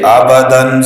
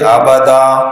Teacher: 2 زبر کی تنوین کو وقف میں الف سے بدلنا، چاہے 2 زبر کے بعد الف لکھا ہوا ہو، جیسے آبادن سے آبادا، یا لکھا ہوا ہو جیسے ہدن سے ہدا، یا ما، یا کچھ بھی نہ لکھا ہوا ہو جیسے ما ان سے ما آ۔ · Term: وقف بالابدال